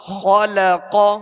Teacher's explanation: خا اور قاف یہ دونوں حروف پر پڑھیں گے، موٹا پڑھیں گے، اس لیے کہ یہ حروف مستعلیہ میں سے، اور لام کو باریک پڑھیں گے